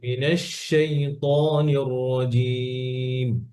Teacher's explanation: শিনটা শিনের তাফাসসি ছড়িয়ে যাবে, আওয়াজ স্প্রেড হবে